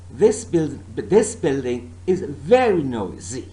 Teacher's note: I'm not stressing the word this, nor building, nor is, and nor noisy, but my stress is on the word very.